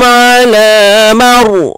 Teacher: Ra tebal sebab sebelumnya baris atas.